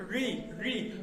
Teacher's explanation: जीभ पलट रही है, पीछे की तरफ पलट रही है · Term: मूर्धा